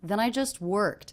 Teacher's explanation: we have the intonation of the voice going down at the end